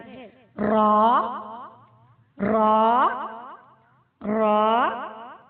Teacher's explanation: جب زبان کی نوک سامنے کے 4 دانتوں سے لگے تو را ادا ہوتا ہے۔